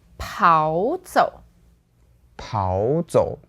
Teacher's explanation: So when it's paired with 走, then we do that tone change. Like two third tones together.